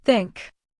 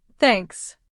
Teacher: First, the TH sound. Put your tongue gently between your teeth and blow air.